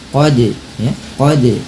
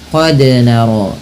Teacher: dal yang berharakat sukun, maka pantulkanlah bunyinya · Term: qalqalah